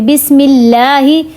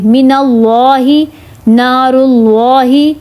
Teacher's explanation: لفظ اللہ کے نام سے پہلے، لام سے پہلے اگر زیر ہو نا تو اس کو باریک پڑھیں گے، بسم اللہ. اگر زبر یا پیش ہو لام سے پہلے تو اس کو موٹا کریں گے، من اللہ، نار اللہ.